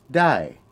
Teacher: the word for can is dai, which is a falling tone.